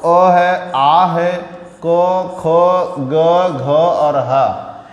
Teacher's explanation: इनका उच्चारण आपका कंठ भाग से होता है